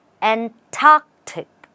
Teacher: You stress on tark and you have Antarctic. There's no R in this.